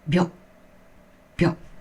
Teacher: even though these hiragana are written with two characters, they are pronounced as the same length as a single character hiragana, one mora. For example, byo is made of bi and yo, but you pronounce it as a single mora, byo, byo. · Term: contracted sounds